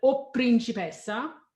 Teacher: O requires the doubling of the next consonant. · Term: double the P